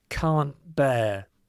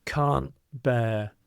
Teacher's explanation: often when you speak it in a natural way, the T is dropped because of this T and B. So when you pronounce it, it sounds like can't bear. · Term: glottal stop